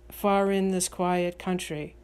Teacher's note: I hear this line with the stress on in, far in this quiet country. However, you can place the stress wherever you wish.